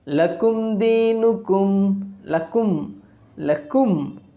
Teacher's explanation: the lucid pronunciation of that mim sakin from its own makhraj without gunna is called izhar. After mim sakin, if we get any letter that is not ba and mim, then we have to pronounce the mim sakin clearly with its own makhraj.